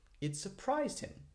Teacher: I make my voice go up for surprised because I want to emphasize it.